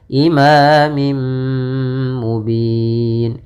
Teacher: langkah nya adalah memasukkan tanwin kepada mim kemudian digunakan imamim mubin tidak langsung imamim mubin tapi tahan dulu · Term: idgham bunah